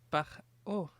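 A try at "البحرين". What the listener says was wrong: See, you went too far. But you would never try and clean your glasses by going ha ha, would you? So so the first one you got mixed up because you went to the back of the palate R.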